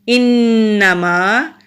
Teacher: انما، حمزہ کے نیچے زیر ہے، نون مشدد ہے، جب نون مشدد ہوتا ہے وہاں پر ہم غنہ کرتے ہیں، یعنی کہ 2 سیکنڈ کے لیے نون کی آواز کو ناک میں چھپا کر رکھتے ہیں